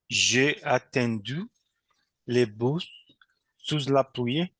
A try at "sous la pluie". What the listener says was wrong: Sous la pluie, parce qu'on ne prononce pas le S final. Sous la pluie.